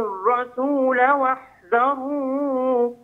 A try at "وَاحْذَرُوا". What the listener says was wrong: لا تطل، لا تطل لأجل النغمة، واحذروا، هكذا ثلاث حركات، واحذروا واحذروا هكذا.